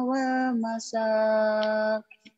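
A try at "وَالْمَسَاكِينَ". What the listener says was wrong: wal masakin sampai situ harus jangan wal masa ya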